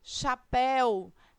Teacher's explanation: Nós percebemos, portanto, fazendo a separação silábica, que a sílaba tônica é a última sílaba, ou seja, esta é uma palavra oxítona